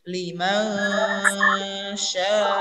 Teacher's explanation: Ketika sya itu berarti tengah lidah bertemu dengan langit-langit. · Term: ikfa hakiki